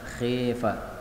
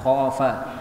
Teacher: pada ayat 46 khafa boleh dibaca imalah khifa